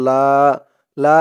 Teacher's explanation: এখানে তিন আলিফ টান হবে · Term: মধ্যে মুনফাসিল